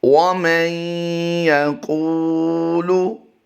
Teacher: اس وقت آپ اپنی اسکرین پر جو لفظ دیکھ رہے ہیں وَمَن يَقُولُ، قاف کی ادائیگی ہم نے پر کرنی ہے. نون ساکن کے بعد حروف یرملون میں سے یا آیا ہے اس لیے ہم یہاں پر ادغام کرتے ہوئے غنہ کریں گے.